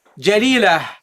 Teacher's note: this ta, when you stop on it, you don't pronounce it as a ta, you pronounce it as a ha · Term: at-ta al-marbuta